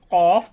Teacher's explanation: জিহ্বার গোড়া তার বরাবর উপরের তালুর সঙ্গে লাগাইয়া 2 নক্তাওয়ালা কফ। দেখুন আমি যেটা উচ্চারণ করি কফ, তাহলে জিহ্বার গোড়াটা আমাদের মুখের যে অংশটা আছে তার উপরের দিকে জিহ্বার গোড়াটা লেগে যায়।